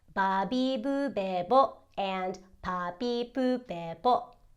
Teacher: those are called bilabial stops, as in you need both your lips to close and stop the airflow in order to produce the desired sound.